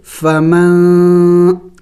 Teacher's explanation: ناک میں آواز لے کے جائیں گے، ناک میں آواز چھپائیں گے ، نون کو ظاہر کر کے نہیں پڑھیں گے، فمن نہیں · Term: اخفا